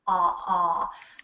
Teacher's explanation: My lips aren't really rounded too much. I mean, they kind of round a little bit, but not like an oo or an o.